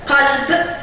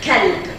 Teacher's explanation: elle prononce le son Q par le son K, de sorte que le mot cœur, qalb, est remplacé par chien, kalb.